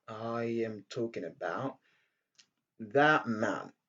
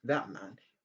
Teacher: on rejette le T qui se trouve à la fin de that à cause du M